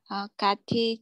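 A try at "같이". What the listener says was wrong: Ok, nhưng mà phát âm một chút kati này không phải kati đâu. Đây đọc là kachi. Nó đọc thành như này này.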